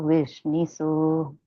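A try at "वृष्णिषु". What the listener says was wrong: Not su, shu. Okay, now roll your tongue. Put it on the flank. This is shampoo, Sha, and this is shoe, like the sapati, right?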